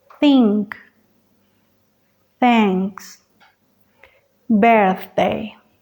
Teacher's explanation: Con el filo de los dientes frontales solo un poco y el aire pasa sobre la lengua relajada este sonido es sordo